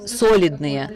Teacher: The stress on the first syllable in the word solidные is not typical for Russian, but still we have to be correct about that.